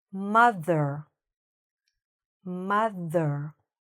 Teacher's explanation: my tongue is coming out a little bit between my teeth when I'm saying the th part. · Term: th sound